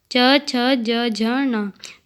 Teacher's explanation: च, छ, ज, झ, ण तालु से उच्चारित वर्ण।